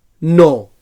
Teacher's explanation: So dental nasal sonor